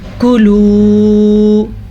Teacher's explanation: کاف کے اوپر پیش ہے اور لام کے اوپر پیش کے ساتھ واو مدہ ہے، یعنی واو ساکن سے پہلے پیش ہے۔ کاف کو ہم لمبا نہیں کریں گے، واو کو ہم کھینچ کے پڑھیں گے۔